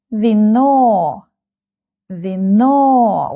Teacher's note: We have two syllables in this word and the second syllable is stressed.